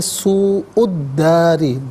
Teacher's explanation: دال مشدد ہے، اسے جماؤ کے ساتھ پڑھیں گے، اور را کے نیچے زیر را کو باریک کر کے پڑھا جائے گا.